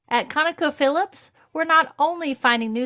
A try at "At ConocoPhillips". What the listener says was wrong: The ConocoPhillips goes up at the end. At ConocoPhillips.